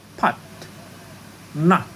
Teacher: the technical name of the sound is open back unrounded